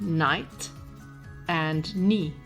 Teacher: the K was once pronounced but over time the pronunciation shifted to a silent k